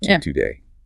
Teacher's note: We don't rush through the stress sound. The vowel gets stretched just a little bit. It gives it weight. · you actually time how long you spend on to versus day, you can really feel that difference in length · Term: held longer